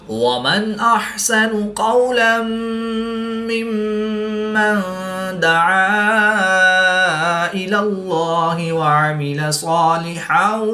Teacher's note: قاف، صاد، قاف حروف مستعلیہ میں سے ہیں، تو ان کو پورے یعنی موٹا پڑھیں گے۔ اس میں دلالت اللہ عز و جل کے لام سے پہلے لام پر زبر ہے، تو اس لیے اس لام کو پورے یعنی موٹا پڑھیں گے۔